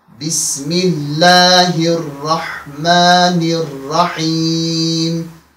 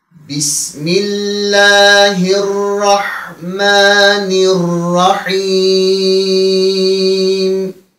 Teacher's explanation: Er-Rahman, Er-Rahim sözlerinin başındaki elif-lam birleşmeleri geçen dersimizde bahsettiğimiz kimi yazıldığı halde okunmur. Burada elif-lamın idgamı vardır.